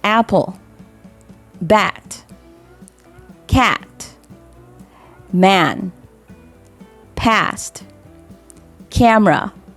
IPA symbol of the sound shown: æ